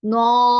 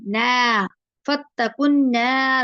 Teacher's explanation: نون زبر کے ساتھ الف آ گیا، اس کو لمبا کرنا ہے لیکن اس کو ہیوی نہیں کرنا، نو ایسے نہیں کرنا، نا فتقنا والتی.